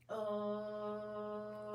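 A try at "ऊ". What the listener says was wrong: Ooh. It's not O. It's ooh.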